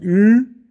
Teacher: deutschen und im französischen haben wir auch noch vordere gerundete Vokale wir sind vorne aber gerundet